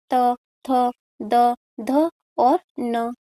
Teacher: त वर्ग के सभी व्यंजन दंती के माध्यम से बोले जाते हैं। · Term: दंत्य